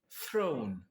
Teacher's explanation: En anglais, on entend une petite diphtongue dans le E, dans throne, alors que en yai, c'est très simple, c'est le son E, le son O.